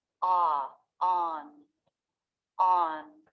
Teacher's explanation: Then the front, flat part of the tongue goes to the roof of the mouth for the N.